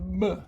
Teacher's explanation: Instead of the P, we're going to add our voice to it.